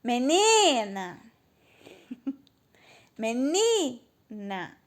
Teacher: Então, o ni é a sílaba mais forte. É o ni. Então, não é a última.